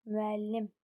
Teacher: müəllim vurğu sondadır, üçüncü hecadadır